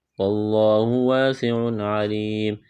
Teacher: لفظ اللہ کے نام سے پہلے زبر ہے، لفظ اللہ کے نام کو موٹا کرنا ہے، الف سے پہلے زبر ایک الف کے برابر کھینچنا ہے، سین میں سیٹی کی آواز پیدا کریں گے، تنوین کے بعد عین ہے، حروف حلقی ہے تو تنوین پر غنہ نہیں کریں گے، آواز ناک میں نہیں چھپائیں گے، یہاں پر وقف کریں گے تو میم کو ساکن کریں گے۔